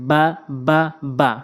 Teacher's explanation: দুই ঠোঁটের ভেজা অংশ থেকে